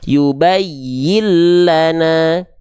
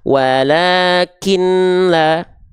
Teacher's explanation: leburkan tanpa dengung tandanya enggak perlu ditahan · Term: idgom bilaguna